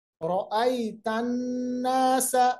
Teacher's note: नून पे जब भी तशदीद हो, नून की आवाज को हम नाक के बांसे में ले आते हैं और उस कंडीशन को हम कहते हैं गुन्ना करना।